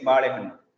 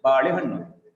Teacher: But in Indian languages, we don't have that kind of feature. We don't give an extra importance, extra prominence to any of the syllables.